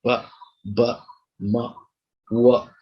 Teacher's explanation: that is two lips, lower lip, okay, touches upper lip, and they come in contact, they come together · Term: bilabial